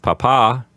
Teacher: Remember to put the accent on the second syllable so you don't call your father a potato.